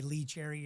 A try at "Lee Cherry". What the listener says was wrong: It doesn't even sound like you're saying Lee Cherry anymore. You say it so quick.